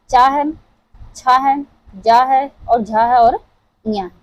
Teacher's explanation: च वर्ग जितने हैं वो हमारे तालु से उच्चारित होते हैं।